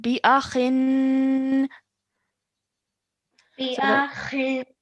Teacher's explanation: you're pronouncing for 2 seconds, holding that nasal sound in our nose for 2 seconds